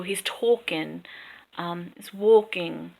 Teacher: we leave off the G in ing.